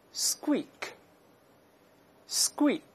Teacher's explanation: 因为▁s▁后面这个一旦重读声带要浊化，所以这个▁k▁要变成▁g▁这个声音